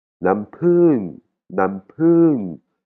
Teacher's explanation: si vous écoutez bien, vous entendrez, il y a de l'air qui sort de ma bouche après le P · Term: popan